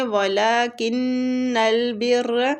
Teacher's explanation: ولیکن البر کن نون مشدد پہ غنہ کریں گے ، بر را کے ساتھ با کو شدت سے ملائیں گے،